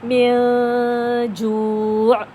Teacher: میم کو بھول کر جیم پڑھنا ہے، نون ڈائریکٹ ہماری ناک میں خود بخود چلا جائے گا. اس کے لیے کسی قسم کے ایفرٹ کرنے کی ضرورت نہیں پڑے گی، کسی قسم کی ہمیں پریشانی نہیں ہو رہی، ہمیں بالکل بھی پریشان ہونے کی ضرورت نہیں ہے.